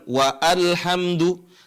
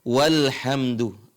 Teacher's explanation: Cuma karena dia di awal kalimat, maka dibaca al, ya. Tapi kalau kita baca ada tambah wa, di sini alifnya tidak dibaca, bukan wa alhamdu, tapi dibaca walhamdu.